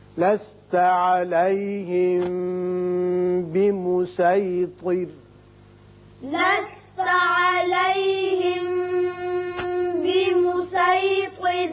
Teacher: یہاں دیکھیے صاد کے اوپر ایک سین لکھا ہوا ہے، آپ کو اختیار ہے چاہے صاد کا مخرج ادا کریں یا سین کا، لیکن سین کا ادا کرنا زیادہ بہتر ہے، اور را باریک ہو جائے گا جب ساکن ہو رہا ہے، پیچھے زیر ہے